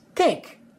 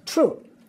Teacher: if a word starts or ends with a th sound we're going to turn that into a dental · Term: the hard th sound